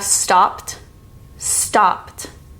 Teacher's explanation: This is the T sound because the root word of stop ends in P. Stopped. So the ending is a T sound instead of ED.